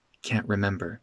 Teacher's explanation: That T becomes a glottal stop. Can't remember.